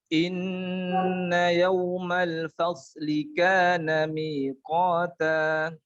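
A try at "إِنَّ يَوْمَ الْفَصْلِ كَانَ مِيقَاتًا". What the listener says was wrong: Ya, di shotnya suaranya dipanjangin. Inna yawmal fasli kana miqata. Fasli ya, karena dia punya sifat rokhawah.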